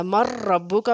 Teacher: لام اور را میں ادغام بلا غنہ، لام اور را میں ادغام بلا غنہ ہوگا، غنہ کے بغیر ادغام ہوگا، جیسے یہاں پہ ہم نے بغیر غنہ کی ادغام کیا ہے۔ مر ربو کا میں دیکھیں بغیر غنہ کے ادغام ہو رہا ہے، اس لیے کہ را حروف نون ساکن کے بعد را حروف جر معلوم میں سے آ گئی ہے۔